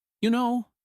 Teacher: You know often comes with a soft, falling, almost thoughtful tone